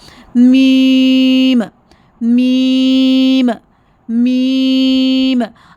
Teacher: आपने नोज़ में से इसकी ट्यून अदा करनी है।